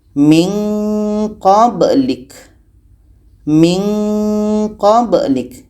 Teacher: ini ada nun mati bertemu qa ikhfa ab'ad jadi ini menghasilkan bunyi nga